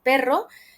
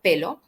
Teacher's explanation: la r doble todavía no la tienen entonces lo sustituyen por el fonema l que si lo tienen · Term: sustitución